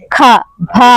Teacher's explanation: ఒత్తక్షరాలు పలికినప్పుడు ఖ భ అన్నప్పుడు నోట్లోనుంచి గాలి మన చేతికి తగులుతుంది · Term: మహాప్రాణాలు